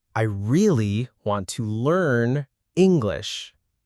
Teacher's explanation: For example, I really want to learn English. Stress falls on really, want, and English.